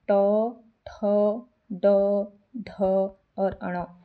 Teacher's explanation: यहां तालु से इनका उच्चारण किया जाता है। ट वर्ग के व्यंजन मूर्धा से इनका उच्चारण होता है